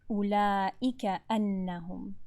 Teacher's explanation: Clear hamza. Completely close your vocal cords together.